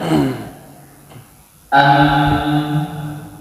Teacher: huruf mim memiliki sifat al-rokhawah, yaitu mengalirnya suara tatkala mengucapkan huruf mim. Sedangkan huruf ba memiliki sifat asyiddah, yang merupakan lawan dari sifat al-rokhawah.